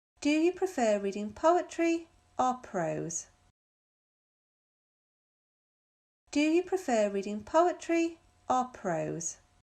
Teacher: train leaves at six doesn't it any questions that offer choices the speaker's voice rises on the first choice or choices and falls on the last choice